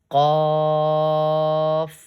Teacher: Qaf is also read from the bottom of the throat.